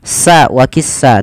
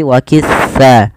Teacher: Pada lafal sa hati-hati pertama di dalam melafalkan huruf sa, jangan dibaca dengan sa waqissa, tapi waqissa. Ujung lidah kita menempel dengan gigi dari atas agar sesuai dengan makhrajnya.